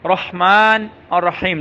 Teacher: اس کی ہا صحیح کرنی ہے، را کو موٹا کرنا ہے